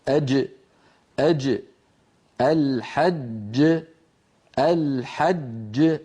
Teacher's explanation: كل جيم مهما كان وضعها فلا بد أن يكون مخرجها مقفولا، ثم بعد ذلك يبتعد هذان الجزءان. · أما الجيم فنرى مخرجها أمامنا من وسط اللسان كما نرى، ومن وسط الحنك الأعلى هكذا كما نرى في الصورة.